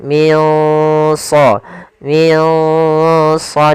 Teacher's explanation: cara membacanya adalah kita samarkan nunnya ke huruf Shad nah Shad termasuk huruf yang tebal dan huruf Istia maka dia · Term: Ikhfa, ikhfa